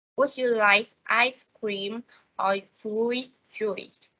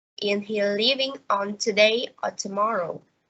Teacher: the tones rise on the first part of the question and fall on the last part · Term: alternative questions